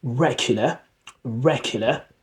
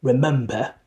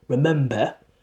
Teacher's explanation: So we don't pronounce the letter R at the end.